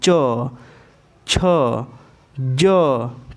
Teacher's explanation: जब हम च का उच्चारण कर रहे हैं तो हमारी जो जीवा है तालु को स्पर्श कर रही है